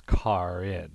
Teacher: the r is pronounced before the vowel in in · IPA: kɑɹ ɪn